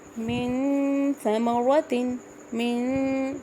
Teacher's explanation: نون کی آواز میں جب غنہ کر رہی ہوں تو جو میری زبان کی ٹپ ہے وہ تالو سے ٹچ نہیں کر رہی بلکہ سینٹر میں ہے